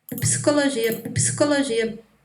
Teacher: Então no PS, entre o P e o S não tem nada. E mesmo ela fez desaparecer o I.